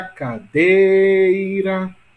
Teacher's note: Sílaba mais longa, dei. Portanto, sílaba tônica de cadeira é dei.